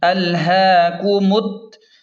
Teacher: ہا پر کھڑا زبر ہے تو اسے ایک الف کے برابر کھینچیں۔ کاف پیش کو، میم کو تا کے ساتھ سختی سے ملائیں گے کیونکہ تا پر شد ہے۔